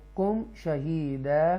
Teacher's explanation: یہاں پر اظہار شفوی کریں گے میم ساکنہ کے بعد